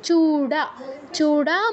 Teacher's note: ড শূন্য র আছে আমরা ড বলবো কারণ সংস্কৃতে ড শূন্য র বলে কিছু নেই ওটা ড হিসেবেই প্রয়োগ হয়